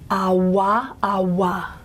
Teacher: we called that the labiovelar semiglide because it's got the lip rounding